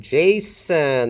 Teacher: It starts with an affricate, a voiced affricate